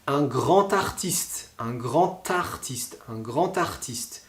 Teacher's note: le D, on le prononcera donc T. On va le lire T, un grand éléphant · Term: liaison avec la lettre D